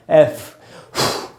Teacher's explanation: हवा का झोंका जब एफ बोलेंगे तो निकलेगा, एफ, ऐसे। ये है वी, इसमें हवा बंद रहती है, लेकिन ऊपर के दांत नीचे के होठ पे लगेंगे और होठ आपस में बिल्कुल भी टच नहीं होने चाहिए।